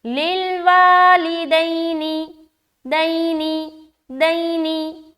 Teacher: यहाँ पर सिर्फ और सिर्फ एक जगह खींचना है, वो है वा में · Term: अलिफ मद्दा